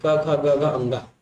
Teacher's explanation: क ख ग घ अंगा, उस तक का उच्चारण हमारे कंठ से होता है